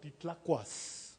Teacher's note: En náhuatl tenemos una S final tensa, muy fuerte, muy bien, muy plena